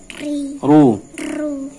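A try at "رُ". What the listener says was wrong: Nah, itu terlalu lama getarannya. Rrrr. Langsung ro. Langsung dilepas lidahnya.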